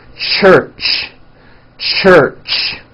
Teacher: it's an unvoiced sound and you can hear the sound for example at the beginning and at the end of the word church · it's a combination of the T sound and the SH sound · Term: CH sound